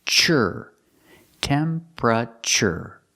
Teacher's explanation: Tempra, pra, chur. The last T makes a ch sound, like chicken.